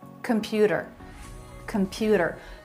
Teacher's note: Computer, a flap instead of t, a T sound. Computer, computer, middle syllable stress